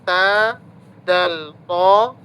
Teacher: Ujung lidah dengan gusi atas ta, dal, to.